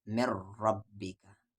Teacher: نون ساکن کے بعد را ہے، یعنی ادغام تو ہوگا پر بغیر غنہ کے، یعنی آواز میں ناک نہیں جائے گی